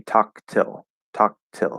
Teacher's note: So I'm going to stop the K. Now, the stop K and the stop T can sound super, super similar.